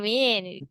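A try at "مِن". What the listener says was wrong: Yes, this is man, not mean.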